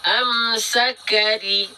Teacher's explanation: huruf ro ketika kasro dibacanya tipis. Ya, tipis. Caranya gimana? Pangkal lidahnya nggak naik. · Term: tarkik